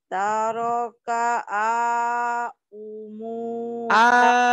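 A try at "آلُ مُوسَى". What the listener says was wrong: Alu bukan au, alu itu lam. Alu Musa.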